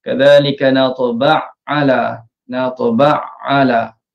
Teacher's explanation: So step dia ialah matikan ain pertama, kemudian masuk ke dalam ain kedua, dari segi penandaan letakkan sabdu. So bacanya ditekan pada ain kedua. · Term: idgham kabir